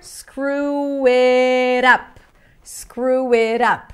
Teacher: We have like a W sound there.